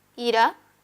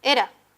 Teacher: Esa diferencia es establecida no por consonantes, sino por las dos vocales. Estas vocales tienen la característica de ser anteriores, la I y la E.